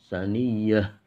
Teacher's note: ada ta yang mati di akhir, itu dibacanya ha, saniyah. Ini juga huruf ha lagi ya, jadi harus hati-hati.